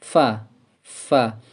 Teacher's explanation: bibir bawah bagian dalam mengenai ujung gigi seri atas